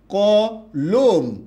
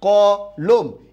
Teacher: কথা কি বুঝতে পেরেছেন আচ্ছা তার মানে হচ্ছে এখানে অ নাই দুটো অ পাশাপাশি আছে তাই পরের অ যেটা আছে সেটা কি হয়ে যাবে ও হয়ে যাবে